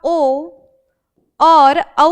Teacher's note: वह वर्ण जिनका उच्चारण कंठ से भी हो और ओष्ठ से भी हो। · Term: कंठोष्ठ